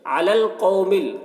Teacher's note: कौफ को पूर पढ़ेंगे, कौफ हुर्फ़ मुस्तालिया में से है।